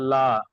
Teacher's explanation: লামের উপর খাড়া যাবার এসছে, খাড়া যাবার আলিফ মাদ্দার সমতুল্য, তাই খাড়া যাবার এক আলিফ পরিমাণ টান দিয়ে পড়তে হয়।